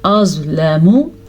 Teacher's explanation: وَمَنْ أَظْلَمُ مِمَّنْ مَنَعَ، وَمَنْ أَظْلَمُ، نون ساکن کے بعد حمزہ آ گیا ہے تو نون ساکن کو ظاہر کر کے بغیر غننے کے پڑھیں گے، وَمَنْ أَظْلَمُ، میم کو لمبا نہیں کرنا، لام کو بھی لمبا نہیں کرنا کیونکہ ان کی مقدار اتنی ہی ہے